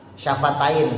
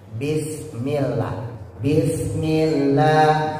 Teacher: Bis bibirnya tempelin. Ba mim makhrajnya sama. Syafatain dua bibir bibirnya tempelin.